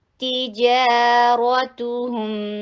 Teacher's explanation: جا، 2 حرکہ لانگ، را ادھر ہیوی ہے